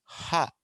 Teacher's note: గాలి పూర్తిగా ఆగిపోదు, కొద్ది కొద్దిగా బయటకు వస్తూ ఉంటుంది